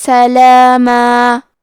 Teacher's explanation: کلمت سلامن کے آخری میں میم پہ تنوین زبر ہے، ہم یہ کلمہ پہ روکے تو تنوین زبر پہ مد الف سے روکیں گے